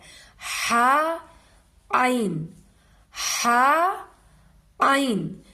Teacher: आइन और हा यह दरमियानी हलक से अदा होती है। हा आइन हा आइन ये दरमियानी हलक से हम अदा करेंगे तो सही से तलफज़ इसका अदा होगा। · عین اور ہا یہ درمیانی حلق سے ادا ہوتی ہے۔ ہا، عین، ہا، عین، یہ درمیانی حلق سے ہم ادا کریں گے تو صحیح سے تلفظ اس کا ادا ہوگا۔